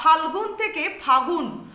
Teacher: বা ফাল্গুন থেকে ফাগুন, মধ্যবর্তী ল ব্যঞ্জন ধ্বনি লোপ পাচ্ছে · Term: ব্যঞ্জন লোপ